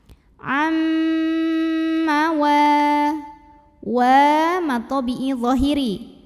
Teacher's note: karena ada nun sukun yang menghadapi huruf mim maka bunyi Nun sukunnya masuk atau lebur ke mim disertai bunyi dengung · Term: idgham bighunnah